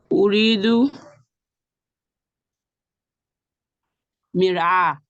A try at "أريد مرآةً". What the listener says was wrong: Kindly pronounce the term marbuta. Mir'atan.